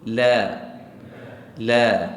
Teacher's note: asas bagi lam fathah baris atas adalah bacaan yang tarqiq ataupun muraqqaq iaitu nipis